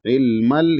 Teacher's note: ऐन को हलक से अदा करना है